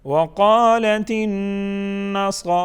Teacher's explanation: نون مشدد غنہ ہوگا، صاد کو موٹا پڑھیں گے، صاد کے اوپر کڑی حرکت ہے، اس کو بھی ایک الف کے برابر کھینچ کے پڑھیں گے.